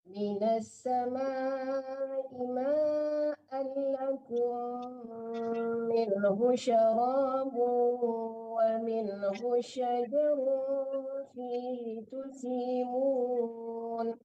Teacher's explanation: Jangan minhu syara, jangan tertahan hu-nya, dua-duanya tidak ada panjang ya.